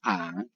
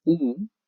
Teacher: Ahora, sí es formado, ya sí es moldeado, no es lo mismo una A, que tiene una abertura grande, ya por lo tanto la amplificación en la cavidad bucal es distinta a una U, ya que es mucho más cerrada, ya, y la amplificación es mucho menor.